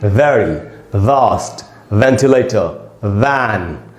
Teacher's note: ऊपर के दांतों को निचले होठों पे टिकाना है, वी ऐसे बोलना है।